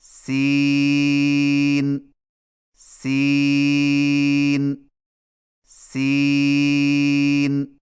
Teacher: سین کی ادائیگی میں زبان کی نوک کو ثنایا سفلی کے کناروں سے مضبوطی سے لگا کر باریک اور سیٹی جیسی آواز میں پڑھیں